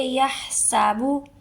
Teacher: ٹھیک ہے، یا سابو نہیں بولنا، ہا کو حلق سے نکال کے سین سی سیٹی نکالیں گے